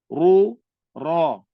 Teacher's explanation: baris depan, ra tu bunyi dia tebal